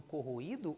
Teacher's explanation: Então, ele acaba se tornando uma vogal também. Ele deixa de ser uma semivogal, que é átona, fraca, para ser uma vogal, que é tônica, que é forte. Aí nós não temos mais a formação de um ditongo, nós temos a formação de um hiato.